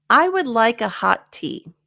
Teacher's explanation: Okay, a good example of this one is hot tea. It ends with a t. It begins with a t. So we're just going to eliminate one, and there's no pause. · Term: blending